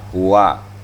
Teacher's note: makhraj huwa ini adalah pada bibir, bukan di tenggorokan